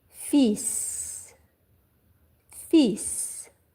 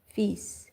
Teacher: The L is silent in this word, okay? So you do not pronounce L.